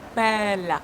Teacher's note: Open your mouth widely for this E sound because this is E ouvert, open E sound.